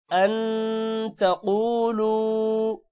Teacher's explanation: اب یہاں پر نون ساکن کے بعد حروف اخفاء یعنی تا آ رہا ہے تو غنہ بھی ہوگا۔